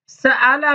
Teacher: وہ حمزہ کو اس کے اپنے مخرج اور الف کے مخرج کے درمیان پڑھنا ہے، کیونکہ حمزہ بھی مفتوح ہے اور اس کا ما قبل بھی مفتوح۔ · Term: بین بین